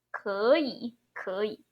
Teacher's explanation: 2 third tone together. The one at the end remain as third. The one in front become second tone.